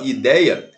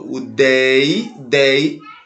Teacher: O dei é a sílaba mais forte. É a penúltima sílaba que é a mais forte. Portanto, é uma palavra paroxítona, galera.